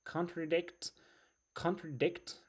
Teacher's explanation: the stress is on the last syllable, as you can see here, and it's verb.